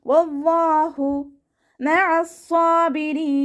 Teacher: ഹ അക്ഷരത്തിൻ്റെ സൗണ്ടിന് തൊണ്ടയുടെ അവസാന ഭാഗത്ത് തന്നെ കൊണ്ടുവരിക കേട്ടോ. ഹംസയുടെ സൗണ്ടായി പോവരുത്. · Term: അയനിൻ്റെ സൗണ്ടിനെ